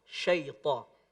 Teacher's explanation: Sya-nya pada kata syaitan ditebalkan lebih tebal, syaitan